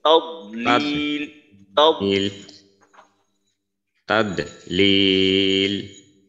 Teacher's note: কলকলার মতো করা যাবে না, অর্থাৎ আওয়াজটা প্রতিধ্বনিত হবে না